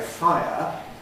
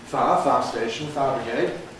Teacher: if you put everything present and say [ˈfaɪə], you more or less are saying it as two syllables ([ˈfaɪ̯.ə]), not compressing it.